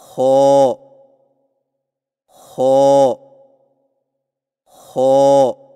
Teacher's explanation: خو کی ادائیگی میں زبان کی جڑ کو تالو کی طرف بلند کرتے ہوئے موٹی آواز میں پڑھیں